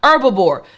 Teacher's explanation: That H is kind of silent.